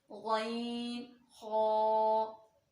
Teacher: गईन और खा दोनों हरूफ जो है वो हलक के ऊपर वाले हिस्से से अदा होते हैं।